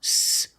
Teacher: the final S makes a true S sound s with no voice